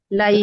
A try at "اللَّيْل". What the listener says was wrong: লাই, লাই, লাম ফাথা ইয়া সুকুন লাটা কখনোই থ্রো করবেন না উপরের দিকে, লাইল, তাইলেই সমস্যা। যদি ফ্ল্যাট বলেন লা, লাই, লা, লাই, লা, লাই।